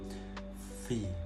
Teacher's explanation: posisi bibir bawah dan gigi atas itu sudah bertemu terlebih dahulu, baru kita tiupkan angin dari dalam V. Nah, baru terbentuk huruf V. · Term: labiodental